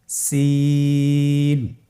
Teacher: জিহ্বার আগা সামনের নিচের দুই দাঁতের পেট ও আগার সঙ্গে লাগিয়ে উচ্চারিত হয় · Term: সিনের মাখরাজ